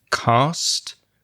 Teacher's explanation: the collection of consonant sounds at the end the s and the t together